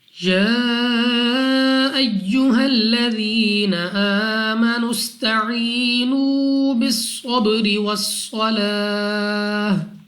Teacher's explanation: बा हमारे पास कलकला में से है, तो जब हम अदा करेंगे हमारे मखरज में जुम्बई सी होगी, यानी हमें अपनी आवाज वापस सुनाई देगी · अलिफ पर खड़ा जबर यानी हमजा को 2 सेकंड तक लंबा करना है। सीन को सीटी वाली आवाज के साथ पढ़ना है। या साकिन से पहले जेर या मद्दा, वाव साकिन से पहले पेश वाव मद्दा, या मद्दा वाव मद्दा दोनों को 2 सेकंड तक खींच कर पढ़ा जाएगा।